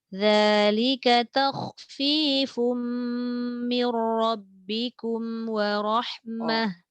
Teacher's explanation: Fum dengung, mir tak dengung.